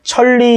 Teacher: 여기서 천리 이렇게 했을 때 앞에 있는 니은이 리을로 발음이 됐죠. 그 이유가 뒤에 있는 리을의 영향을 받아서 그런 거예요. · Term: 역행동화